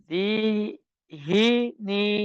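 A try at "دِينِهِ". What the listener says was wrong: আবার হি বলছেন।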